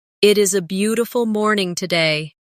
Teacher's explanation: Feel the flow from beautiful to morning. There's a tiny connection there where the sound moves smoothly without a pause.